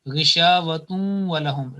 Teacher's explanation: the joining will take place with 2 second nasal sound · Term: joining with nasal sound